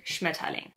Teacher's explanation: The stress is on the first syllable of the word.